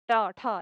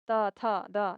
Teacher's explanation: मूर्धन्य ट का जो लाइन है, इसमें जितने भी अक्षर हैं, वो थोड़ा सख्त निकलता है हमारे मुँह से। ट, ठ ऐसे और नीचे जो दंत्य त का लाइन है, यहाँ थोड़ा हल्के से निकलता है, कोमलता से।